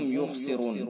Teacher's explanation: یخسرون، خا پر پڑھا جائے گا چونکہ حروف مستعلیہ میں سے ہے، را بھی پر پڑھا جائے گا چونکہ را متحرک ہے